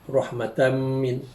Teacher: Di situ tanwin bertemu dengan mim, hukumnya idgham bi gunnah, iaitu dibaca dengan dengung